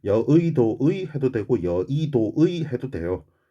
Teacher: 두 번째 글자인 의는 의로 발음해도 되고 이로 발음해도 되고